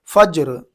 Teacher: وقف کریں گے تو را کے اوپر جزم دے کر کے سانس توڑیں گے